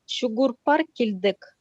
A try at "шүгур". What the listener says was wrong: Не шу, а щи. Шүгір. Шүгір.